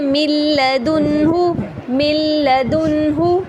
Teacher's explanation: نون ساکن کو ہم لام میں داخل کر رہے ہیں لیکن اس میں غنہ نہیں کر رہے